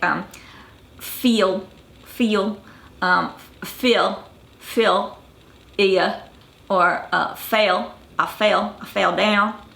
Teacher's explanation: you're going to add a little y sound and then that little schwa symbol after it. So if you have words like especially before the letter L, you have words like um feel feel um feel or uh fail I fail a fail.